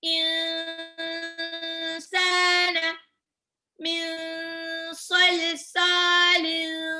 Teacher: Jadi nun sukunnya hampir mau lompat ke sin. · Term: Ikhfa